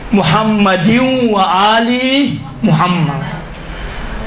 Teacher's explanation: ادغام کا معنی یہ ہے کہ یہ تنوین یا سے مل جائیں گے، یا کے ساتھ تلفظ ہوں گے